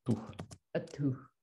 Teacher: without aspiration on the T